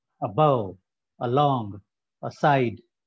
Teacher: stress on second syllable